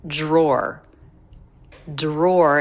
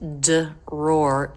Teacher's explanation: Dr ends up sounding like Jr